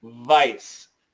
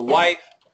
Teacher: the bottom lip touches the teeth. The wife, no teeth touching. But vibration, yes.